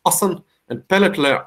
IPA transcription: 'ăšăn e 'pĕlĕtlĕ